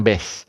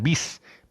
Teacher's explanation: ba ni berbaris bawah. Tolong bunyikan dengan vokal I. Saya ulang teman, ba ni berbaris bawah, bunyi bis, bukan bes.